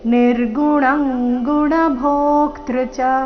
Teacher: ಅನುಸ್ವಾರದ ಉಚ್ಚಾರಣೆ ಕ ವರ್ಗ ಅನುನಾಸಿಕ ಇಲ್ಲಿ